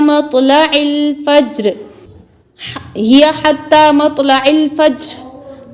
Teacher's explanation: ہی حتی مطلع الفجر، طا پر قلقلہ کرتے ہوئے، مطلع الفجر جیم پر بھی قلقلہ ہوگا اور جزم اس کی باقی رکھ کے پھر وقف کرنا ہے، فجر اس طریقے سے۔